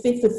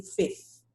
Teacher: Now notice the F is not, the second F is not pronounced